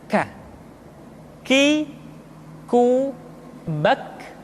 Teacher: huruf K diucapkan dengan mengangkat pangkal lidah kita ke posisi di depan huruf Qaf. K diucapkan dengan mengalirkan nafas kita.